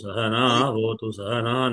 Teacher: నకారం మీద కాదు నకారం తర్వాత ఉన్న అకారం మీదనే స్వరం ఉంటుంది